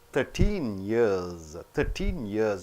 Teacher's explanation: after 13 number years is coming you have to stress on years